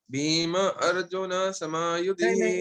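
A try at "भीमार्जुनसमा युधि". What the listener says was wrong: In the chanting, Rajiv, we don't break. It is a chandas. Chanda, if you break the words, chandas will break. So you have to say in one line without breaking the sandhi. You don't have to say Bhima. No, Bhima Arjuna nahi. Bhimarjuna. Bhimarjuna samayudhi.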